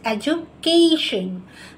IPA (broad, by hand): ˌedʒ.ʊˈkeɪ.ʃən